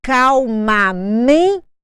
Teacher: Me é a minha sílaba tônica, mas ela não tem acento gráfico porque nem sempre a sílaba tônica vem marcada com acento.